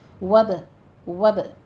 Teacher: جلدی سے ہونٹوں کو کھولیے تاکہ قلقلہ ہو، تھوڑی سی جنبش ہو